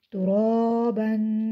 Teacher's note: با کے اوپر دو زبر ہیں، دو زبر کو تنوین کہتے ہیں، تنوین کو غنے کے ساتھ پڑھتے ہیں۔ غنہ ناک میں آواز چھپانے کا نام ہے